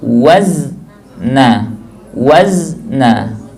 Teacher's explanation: Ketika disukunkan zai, jangan langsung dilepas.